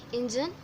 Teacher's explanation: The underlined syllables are the one you need to stress. Engine, in the first syllable you have to pay the focus or you have to pay the stress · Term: stressed syllable